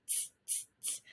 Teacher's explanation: I'm looking at my teeth t, and my tongue, t, and they are blocking that sound, the air, from coming out. And if I touch my vocal cords, t, t, t, t, I don't feel anything.